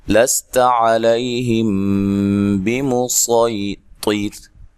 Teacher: اچھا، چوتھا جو کلمہ ہے بمسیطر، یہ سین کے ساتھ نہیں بلکہ خالص صاد کے ساتھ پڑھا جائے گا، ٹھیک ہے، بمسیطر، طیط، را کو باریک پڑھیں گے وقف کی صورت میں